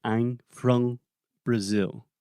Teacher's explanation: they're not closing their mouth completely with the final M in the words I'm from